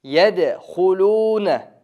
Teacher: bu yerdan dal tamg'asi qalqala qilamiz.